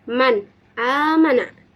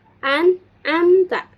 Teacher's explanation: Nah, huruf halqi tersebut ada enam, yaitu hamzah, ha, ain, ha, ko, gin. Maka harus dibaca dengan jelas atau terang berbunyi n, namun tidak mengharapkan sebuah tekanan atau sentakan, baik bertemunya dalam satu kalimat ataupun di lain kalimat. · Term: izhar halqi